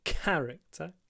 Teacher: remember to put the stress on the first syllable